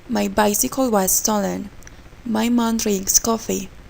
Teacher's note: the 2-3-1 pattern or rise and falling intonation pattern is used in declarative sentences, imperative sentences, and information questions.